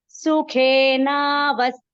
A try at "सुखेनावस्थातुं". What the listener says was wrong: Sukhena, that is one word. You cannot chant it as vasthatum.